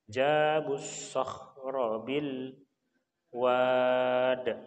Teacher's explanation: karena bertemu dengan alif lam syamsiyah ya, jadi maka masuk, diidghamkan, dimasukkan jabussah ya.